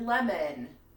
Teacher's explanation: o n which can sound like the upside down a and n · We have O-N, which can sound like the upside down E and N. For example, in the word lemon, N, you hear that E, you hear that subtle E in there.